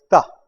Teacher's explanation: le T palatal la langue touche complètement le palais